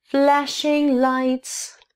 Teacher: л, так же как и дт, и н, произносится на альвеолах.